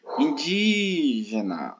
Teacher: Foi di, então essa é a sílaba tônica.